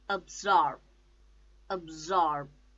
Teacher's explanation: the stress is on second syllable